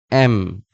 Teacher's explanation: ২ টা ঠোঁট একসাথে লেগে যাবে